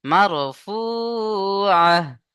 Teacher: আয়াতের শেষে গোলতা হা সাকিন করে পড়তে হবে।